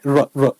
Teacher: लुंठित या प्रकंपी कहते हैं राको की जीभ से लुढ़कता हुआ प्रतीत होता है, जीभ में उच्चारण करते समय कंपन भी होता है, र र कंपन होगा, तो सर प्रकंपी।